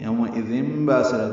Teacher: تنوین کے بعد با آنے کی وجہ سے اقلاب ہو رہا ہے. با الف مدہ ہے.